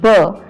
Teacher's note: when we speak b, then our lips touch with each other. So b is a bilabial sound.